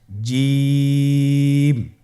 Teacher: জিহ্বার মধ্যখান তার বরাবর উপরের তালুর সঙ্গে লাগিয়ে উচ্চারিত হয় আপনারা পিকচারে ছবিতে দেখতে পাচ্ছেন যে জিহ্বার মধ্যখান তার বরাবর উপরে